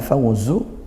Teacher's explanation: Fawzu ini fathah diikuti waw sukun dilinkan ya, dilembutkan.